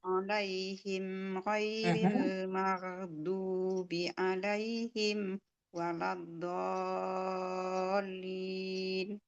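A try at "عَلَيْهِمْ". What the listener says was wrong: Sekali lagi yang alaihimnya ini masih A ya, masih alaihim. Ghairil maghdubi alaihim. Yang an'amtanya sudah bagus. Alaihim yang ini sudah bagus. Yang alaihim yang keduanya belum.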